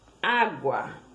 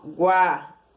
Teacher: Primeiro o U, que é uma semivogal, e depois o A, que é a vogal. Semivogal mais vogal em uma única sílaba. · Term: ditongo crescente